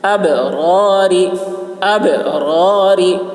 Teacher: با میں قلقلہ اور را پر ہوگی اور یہ را باریک ہوگی